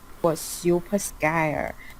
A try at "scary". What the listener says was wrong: But I mean, she does actually makes the word scary sound scary. It's very good, except she said scare instead of scary. But it sounds scary.